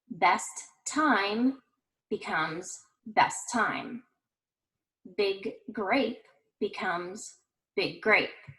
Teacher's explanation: the following word begins in the same or similar consonant sound you will only pronounce that sound once by lengthening or holding the sound you do not need to say the consonant sound twice for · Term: consonant plus consonant